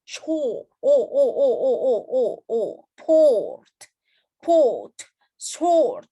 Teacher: Jadi dia bukan panjang sih, tapi dia lebih dalam, lebih bulat gitu ibaratnya.